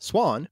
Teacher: the short ah in swan remains basically the same from Old English to Modern English